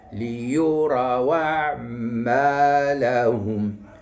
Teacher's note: المقطع الرباعي خص النبر يكون على الثاني وعلى الرابع